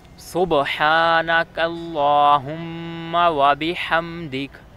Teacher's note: سبحانک میں جو ہا ہے وہ گلے کے درمیان سے ادا ہونا ہے، اور اللہم میں جو ہا ہے وہ سینے کے ادھر سے ادا ہونا ہے، سینے کی طرف سے، اور وبحمدک میں جو ہا ہے یہ پھر گلے کے درمیان سے ادا ہونا ہے۔